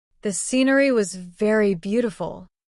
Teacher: The little words though was very are quick and light. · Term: sentence stress